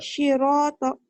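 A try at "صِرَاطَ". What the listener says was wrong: Soalnya jangan anginnya biasa aja. Kayak bersiul.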